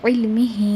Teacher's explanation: ہاں کو تھوڑا آپ 4 کاؤنٹ کے برابر کھینچیں گے